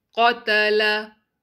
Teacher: ta and lam has to be light. Only qaf will be heavy.